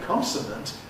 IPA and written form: ˈkɒnsn̩ənt (consonant)